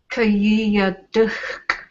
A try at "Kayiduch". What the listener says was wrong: Kayiduch. So there shouldn't be an extra syllable in there. They just sort of run into it. Kayiduch. The kiya is with the second person singular. Kayiduch.